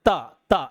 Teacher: जीभ जो है दांत में टकरा रहा है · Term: दंतव्य